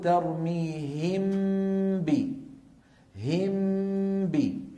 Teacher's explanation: صوت الميم مستقل عن صوت الباء يشبه الإظهار. هم بي الشفتان انطبقتا طبقة واحدة على ميم وعلى باء يشبه. · شكل الشفتين كما نرى على اللوحة، شكل الشفتين عند نطق الميم المخفى ويكون بانطباقهما على بعض دون مجافات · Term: الإخفاء